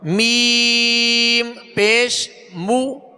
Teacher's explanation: میم کو ادا کرنے کے بعد جو مد کی آواز ہے اس بات کا خیال رکھیں کہ یہ ناک کی طرف نہ لوٹے، جیسے میم ایسے نہیں، میم منہ سے آواز نکلے.